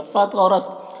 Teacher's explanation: فطرس، تو کو پر پڑھیں گے، را کو بھی پر پڑھیں گے